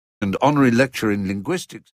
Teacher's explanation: Very often the weak form of and loses its final D too.